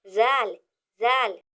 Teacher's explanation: जबान की नोक ऊपर के दांतों के किनारे को टच होगी जब हम जाल को अदा करेंगे तो जबान की नोक ऊपर के दांतों के किनारे को टच होगी